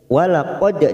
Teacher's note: dal sukun qalqalah sugro kita pantulkan. Walaqad masuk ke huruf ra yang bertasdid.